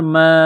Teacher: یہ لمبی مد ہے، 4 الف کے برابر کھینچنا ہے